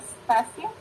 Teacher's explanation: Jadi tehnya sudah bukan lagi apiko melainkan lamino, dan kita akan merasakan bunyi tehnya agak sedikit bergeser karena mendapat pengaruh dari bunyi es gitu ya.